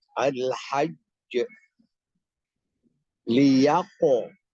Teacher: Apabila huruf yang mendahuluinya berbaris atas, maka bunyi pelafalan qalqalahnya lebih dekat pada fathah atau vokal A pada al-hajj dan vokal O pada liyaqta'a.